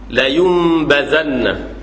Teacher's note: huruf tu asli dia Nun tapi kita ubah jadi mim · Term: iqlab